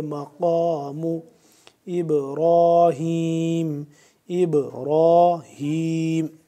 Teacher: بینات مقام، قاف کو موٹا کر کے پڑھیں گے